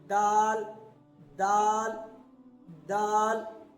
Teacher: जुबान का कनारा यानी जुबान की शुरू वाला हिस्सा और हमारे जो ऊपर की जो दांत हैं उन दोनों दांतों की जड़ पे जाकर जीभ को लगा दीजिए तो दाल अदा हो जाएगा